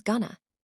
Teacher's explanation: The weak form of to disappears entirely, replaced by n.